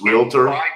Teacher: There's no vowel in between the L and T.